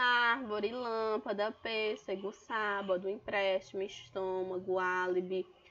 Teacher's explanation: todas essas palavras a sílaba antepenúltima é a sílaba forte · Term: proparoxítona